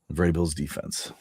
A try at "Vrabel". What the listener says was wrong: Vrabel. You put the emphasis on the wrong syllable. Vrabel. Vrabel.